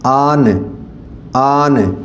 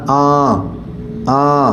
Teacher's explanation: अब नन गुन्ना जो है यह आपकी नाक में से आवाज निकलती है इसको प्योर जो है आपने नून की आवाज नहीं निकालनी मिसाल